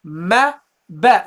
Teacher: the meme and the ba, they have the same point of articulation. Ma, ba, the lips.